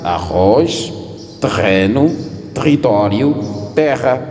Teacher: Se tivermos uma palavra com um R mais forte ou com duplo R, vai ser gutural.